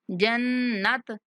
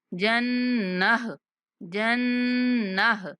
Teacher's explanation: لد خل الجنہ، نون پر غنہ کریں گے، اور جو آخر میں گول تا آ رہی ہے تو ہم جب اس پر وقف کریں گے تو گول تا کو ہا سے بدل دیں گے